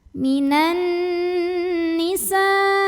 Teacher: Mad tabi'inya alif yang didahului baris fathah, hamzahnya yang i, satu kata yaitu kata an-nisa'i. Maka sinnya dipanjangkan, boleh 4, boleh juga 5 harokat. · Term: mad wajib muttasil